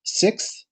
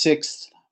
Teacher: We wouldn't actually, in most instances, say the S on the end of this. So what we would typically have is we'd have the k, th, and s, sixth.